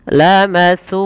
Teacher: Maka panjangkan su sepanjang dua harakat karena ia mad tabi'i.